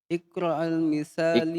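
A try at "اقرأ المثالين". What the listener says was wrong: Iqra'il. Misalain. Ya dan nun akhirnya.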